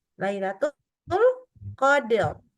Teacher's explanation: dibaca ro-nya harusnya tebal